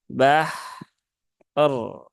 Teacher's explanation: ya Wal bahr bahr er er er ya Wal bahr nah dan sebelum ke ro ya tunaikan dulu rakhwah dari huruf h-nya · sebelum ke ro ya, tunaikan dulu rokhawah dari huruf haknya. Bahr ya, bukan bahr, tapi wal bahr.